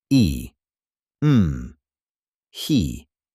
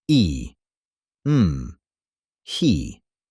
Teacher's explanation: Unlike English, they don't slide, they don't change shape mid-sound. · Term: Korean vowels